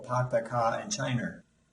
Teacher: the R doesn't totally disappear, it actually migrates. You see it show up in the back end of words that end in a vowel. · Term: migrating R's